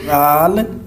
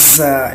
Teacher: اور اس کی زبان کی نوک جو ہے دانتوں کے اندر رکھنی ہے، زال کی باہر رکھنی ہے اور زا کی اندر رکھنی ہے، اور سیٹی نکال کے بولیں